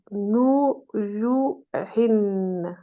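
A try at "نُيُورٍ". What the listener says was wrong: le ra, il y a un problème de prononciation avec le ra. Parce que moi j'entends Nouyouhin. Moi c'est ce que j'entends. c'est alors que c'est Nouyourin. Rin. on roule bien la langue. Par exemple, je vais dire ra, rou, ri.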